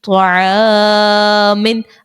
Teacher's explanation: الف سے پہلے عین جو ہے یہ باریک لفظ ہے, اسی لیے یہاں پر الف کو باریک ادا کریں گے